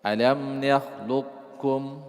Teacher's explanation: Alam nakhluqkum dibaca qafnya tapi tidak pantul.